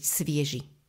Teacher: v slove svieži je dlhá slabika je tam dvojhláska je a preto nasledujúca slabika nemôže byť dlhá musíme ju skrátiť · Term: rytmický zákon